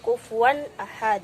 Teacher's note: makhroj dari huruf-huruf izhar halqi keluar atau diucapkan dari dalam tenggorokan · tidak boleh dibaca dengung harus dengan jelas